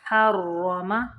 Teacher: را مشدد ہے اس لیے ہا کو را کے اندر تھوڑی دیر ملائیں گے